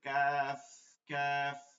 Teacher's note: কোন প্রয়োজন দরকার নেই এজন্য উচ্চারণটা হবে পাতলা করে কাফ কাফ মাখরাজটা হচ্ছে জিহ্বার গোড়া থেকে একটু আগে বাড়িয়া জিহ্বার গোড়া থেকে একটু আগে বাড়ায় তার বরাবর উপরে তাহলে সঙ্গে